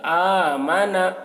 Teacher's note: نون میں جلدی پڑھنا ہے، نون کو کھینچنا نہیں ہے